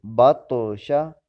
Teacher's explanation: با زبر طا، بط، شین زبر شا، بطشا۔ طا کو کلکلا کریں گے، ہلا کر پڑھیں گے